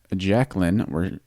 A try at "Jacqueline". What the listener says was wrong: The way you pronounce Jacqueline, Yeah, but you pronounce it with like a pause in the beginning, so it sounded like you said. No, but it sounded like you said Jacqueline.